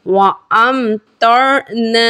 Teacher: یہاں میم ساکین کے بعد حرف طا ہے، با اور میم کے علاوہ حرف آنے کی وجہ سے یہاں اظہار شفوی کا قاعدہ ہے، بغیر گننے کے پڑھیں گے